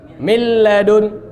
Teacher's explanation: Milladun langsung lam. Nun hilang, gunnahnya juga enggak ada. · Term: idgham bila gunnah